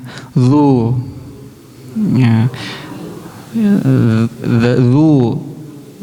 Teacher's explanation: Jadi lidahnya dikenakan kepada gigi atas gitu ya.